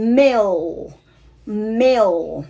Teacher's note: คำนี้มันจบด้วยตัวlคุณตีลิ้นขึ้นมาเสียบไว้หลังฟันบน